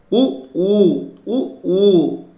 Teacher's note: இதழ்களை குவிப்பதால் பிறக்கும் எழுத்துகள்